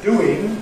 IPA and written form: ˈduːɪŋ (doing)